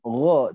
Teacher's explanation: Kemudian tebal tipis, gho, jangan sampai gha, tapi gho, ya, gho, ghona. Jadi bukan ghana